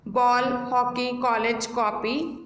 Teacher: इसका उच्चारण आ तथा ओ के बीच में होता है, ना ये कम्प्लीटली आ है ना ओ है, तो इसका साउंड ओ अल्फाबेट की तरह फील होता है।